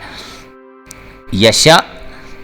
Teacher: یہ حمزہ ساکن کے قوانین کے متعلق اس کو ابھار کے اس کو جھٹکا دے کے پڑھنا ہوتا ہے